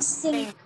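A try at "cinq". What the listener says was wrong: Sang. Not sink, it's sang.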